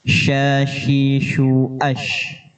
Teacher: Shin keluar dari tengah lidah beserta angin yang tersebar keras. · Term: huruf shin